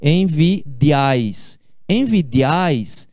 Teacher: a gente pronuncia essas 3 vogais juntas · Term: tritongo